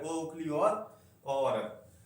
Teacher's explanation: ओ औरत का उच्चारण कंठ और ओष्ठ से किया जाता है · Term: कंठ ओष्ठ